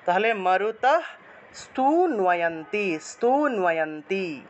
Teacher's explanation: দন্তীয় নয়ের নিচে বফলা, তাহলে নুয়া উচ্চারণ